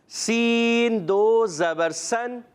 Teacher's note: دونوں دانت ملانے، سین سیٹی کے ساتھ